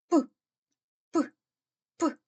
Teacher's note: перший звук у слові пилосос простежте за його вимовою п п під час вимовляння звука п стуляються губи і видихуване повітря натрапляє на перешкоду